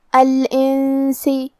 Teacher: کلمت الانس میں یہاں حکم الاخفاء کو ہم ادا کریں گے غنہ کے ساتھ